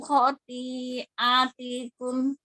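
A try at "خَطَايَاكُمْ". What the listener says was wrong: Koknya panjangkan lagi khoti'atikum. A-nya panjang. Khoti'a. Hati-hati, kan kita udah belajar hamzahnya. Tadi keseret-seret ke ainnya.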